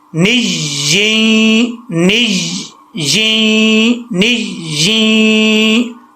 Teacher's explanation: پہلی یا میں غنہ نہیں ہے, جب دوسری یا کو کنیکٹ کریں گے پھر اس میں غنہ کریں گے